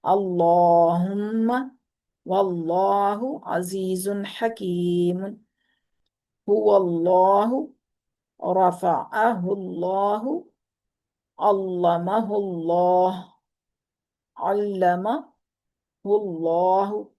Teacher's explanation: زبر اور پیش کی صورت میں اللہ کا لام پر پڑا جا رہا ہے